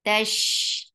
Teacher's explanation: Ta is very sharp. For fatha open your jaws. The sound is very short.